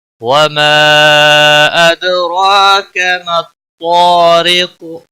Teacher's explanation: وما مد منفصل ہے، 3 الف کے برابر کھینچ کر پڑھیں گے، دال ساکن پر قلقلہ ہوگا۔